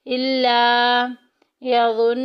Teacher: नून मुशद्दिद आ गया, गुन्ना करेंगे, नाक में आवाज़ लेके जाएंगे और देखें कि वाव साकिन पीछे पेश वाव मद्दा का कायदा जारी हो रहा है, एक अलिफ के बराबर लंबा करेंगे।